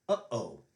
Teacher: if you blow and think of pronouncing uh-oh, that is a glottal stop